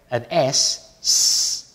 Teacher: if I say an S the vocal cords are not vibrating